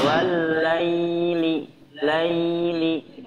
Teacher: ketika mengucapkan atau membaca madlain, ya, ya sukunnya ini dialirkan. Jangan sampai ada suara memantul.